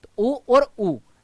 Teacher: आप उ में कम समय दे रहे हो ऊ बड़ा दे रहे हो